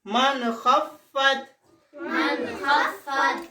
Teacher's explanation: Izhar. This means without pulling, without nasal passage.